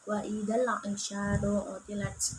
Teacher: Dan alif lam qamariyah yaitu alif lam bertemu dengan ain dibaca jelas